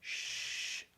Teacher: What happens is the airflow that comes out, if I go shh, I'm closing the space between the tongue and the top of the mouth, so that air has turbulence.